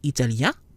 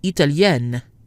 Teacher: Masculine, italien, nasal. Feminine, italienne, not nasal. Another note, which we've mentioned several times, whether a sound is nasal or not is determined by whether or not the combinations belong to the same syllable.